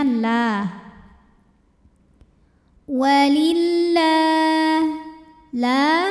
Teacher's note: atau lam jalalah dibunyikan secara t sebab huruf sebelumnya berbaris kasr maka cara bacanya lam ini dibaca tipis